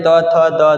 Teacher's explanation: जो बोलने के दौरान जुबान, जीभ दांत से टकराता हो, वो कहलाते हैं त वर्ग